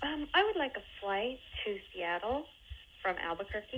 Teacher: she's raising her intonation at the ends of each one of these little phrases, making it sound a little more like a question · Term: uptalk